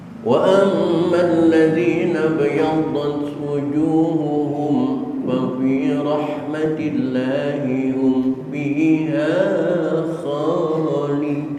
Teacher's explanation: mim mati ketemu fa dalam kalimat wujuhuhum fa fi rahmatillah, itu juga idhar syafawi